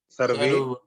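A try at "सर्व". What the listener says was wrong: Sarva. Because the Ekar is not there. Only Refa you can see very clearly. Sarva.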